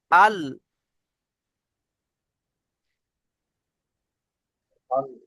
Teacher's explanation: জীভের আগার কিনারা এবং সামনের উপরের দুই পাশে দাঁতের গোড়ার সাথে লাগিয়ে উচ্চারিত হয় লাম